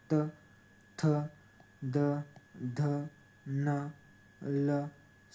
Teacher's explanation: आपल्या जिभेचा दंत्याला स्पर्श होतो म्हणून दंत्य म्हणतात